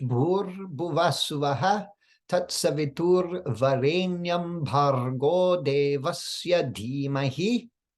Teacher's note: In the mantra, we want to be careful to roll the R's more than we do in English.